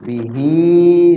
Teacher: madnya qasir jangan panjang-panjang banget dua ketukan aja